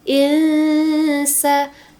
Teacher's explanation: maka bacanya samar gitu. Dengung ya dengung dua sampai 3 harakat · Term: ikhfa hakiki